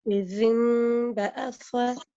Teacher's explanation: So the noon is nasalized, it goes into your nose as a nasal sound, and you've replaced the noon by a meme.